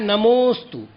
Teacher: तो जो अवग्रह चिन्ह हुआ है वहां पर अकार नहीं बोलना है, अवर्ण का उच्चारण नहीं करना है, अपितु उच्चारण करना है नमोस्तु, अर्थात मुंह पर थोड़ा सा जोर दिया जाएगा नमोस्तु।